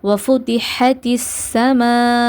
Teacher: அடுத்து ஹத்திஸ்ன்னு நம்ம இங்கே வந்து இணைப்போம். இணைக்கும் போது நம்ம என்ன பண்ணக்கூடாது, குன்னா செய்யக்கூடாது, இணைக்க மட்டும் தான் செய்யணும்